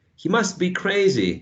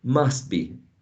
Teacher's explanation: the t sound, the final sound in must, is not produced when you say must be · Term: elision